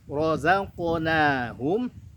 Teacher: ro-nya tebal, zainya tipis, qafnya tebal, qalqalah.